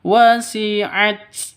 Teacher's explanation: harus ada hamesnya karena huruf hames ada nafasnya yang keluar.